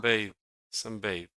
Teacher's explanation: Sunbathe is stressed on the first syllable.